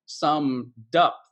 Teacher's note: And especially with like words that end in ED and the next word starts with a vowel sound. So like summed up. It's like the word dup.